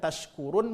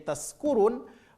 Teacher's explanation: Wastul lisan, tengah-tengah lidah nempel ke tengah-tengah langit-langit atas. Ini. Ketika kita tidak memberikan pada makhrajnya, ya, tidak keluar pada makhraj tengah-tengah lidah, maka sebahagian dari kita membacanya menjadi taskurun. · Karena tidak faham tempat keluar huruf. Kalau shin tempat keluar hurufnya adalah tengah lidah, sedangkan huruf sin tempat keluar hurufnya adalah ujung lidah. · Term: huruf shin